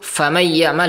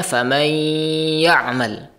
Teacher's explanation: dia tidak menggunnahkan, tidak memberikan sifat gunnah dua harokat